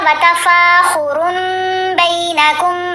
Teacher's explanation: میم سے بدلی جائے گی نون کی آواز